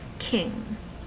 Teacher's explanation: the airflow goes into the nasal cavity as well as the oral cavity. You make nasal sounds.